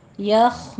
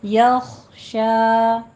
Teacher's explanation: आयत नंबर 9 देखिए, वह हुआ यख्शा, वाओ होंठों को गोल करने से, व होंठों को गोल करें, हुआ में भी होंठों को गोल करना है, और हा अक्से अलग से, हुआ नहीं कहना, वह हुआ, यख में या बारीक रहेगा, शीन भी बारीक रहेगी, खौ को पुर करना है आपने, यख, खौ स्टॉप करना है, कलकला नहीं करना, इसके ऊपर यखो नहीं कहना, यख शा, यख शौ भी नहीं कहना, शौ नहीं है, शा शा, ठीक है, शीन खड़ी ज़बर शा बारीक रखना है।